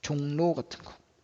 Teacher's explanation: 미음, 이응도 리을을 만나면 리을이 니은으로 바뀌는 것도 리을의 비음화입니다.